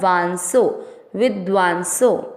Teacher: वा पर बिंदी शब्द के बीच में है तो उसको पढ़ेंगे आधा न